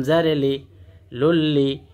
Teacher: তানবিনের পরে যদি লাম আসে তাহলে ইদগামে বেলা গুন্না মিলাইয়া গুন্না ছাড়া পড়তে হয়